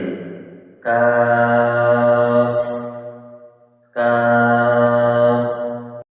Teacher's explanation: জিহ্বার গোড়া থেকে একটু আগে বাড়িয়ে তার বরাবর উপরের তালুর সঙ্গে লাগিয়ে